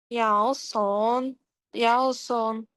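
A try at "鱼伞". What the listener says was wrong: Нет, это Ю читается первое. Ю. Юсан. Ю. Вот второй тон. Юсан. Да, Юсан.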